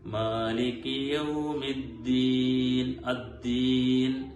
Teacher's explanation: ഹാ വരാത്ത രീതിയിൽ ദാല് ശബ്ദ കൊടുത്തുകൊണ്ടാണ് ഓതേണ്ടത്